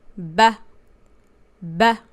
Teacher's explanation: fat ha is a short vowel sounds like ah